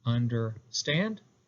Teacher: So 2 unstressed syllables followed by a stressed. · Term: anapest